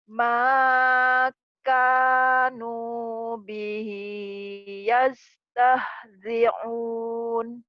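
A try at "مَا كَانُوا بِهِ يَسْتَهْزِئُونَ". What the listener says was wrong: Makanu bihi yastahzi'un. Un ya, jangan ke ain. Un.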